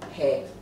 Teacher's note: En fait, ça monte. C'est l'inverse. Ça ne descend pas, ça monte.